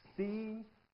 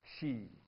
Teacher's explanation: if you say see and she, you will notice that the tip of the tongue is a bit further back